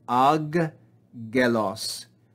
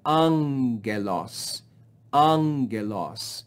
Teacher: gelos and that's difficult to say so the greeks simplify it they do not read it as two gammas but change the first gamma to make the sound of the consonant nu and we read this not as ag gelos but we read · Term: double gamma